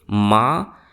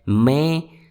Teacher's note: उनमें मुंह के साथ-साथ आपकी नाक से भी ध्वनि निकलती है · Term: अनुनासिक ध्वनि